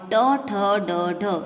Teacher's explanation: ट ठ ड ढ यानी सेरेब्रेट यानी मूर्धन्य है वह इनका उच्चारण स्थान है।